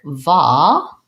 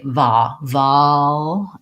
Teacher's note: So I want an open jaw and my tongue is relaxed, no lip rounding. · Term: vowel ah